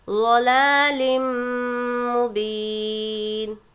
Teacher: तनवीन के बाद मीम इदग़ाम यरमलून में से मीम दूसरे कलिमे में हो तो गुन्ने के साथ हमको मिलाकर पढ़ना होता है।